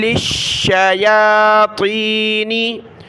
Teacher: لام اور شین کو سخت کیا تشدید کی وجہ سے